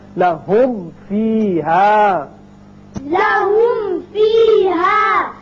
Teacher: یعنی آسان طریقہ ہے کہ آپ ہونٹوں کو ملائیں جب میم ادا کریں، ملا کے پھر آپ فا ادا کیجئے، ہونٹ ملے تو میم ادا ہوا، اور فا کا جو مخرج ہے وہ ہے اوپر والے جو دانت ہیں وہ نیچے ہونٹ سے لگیں گے، تب فا ادا ہوگا۔